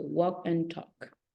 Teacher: when you have the words like walk and talk you don't pronounce letter L it doesn't exist